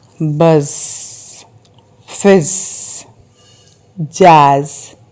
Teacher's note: Can you hear the buzzing sound in buzz, fizz?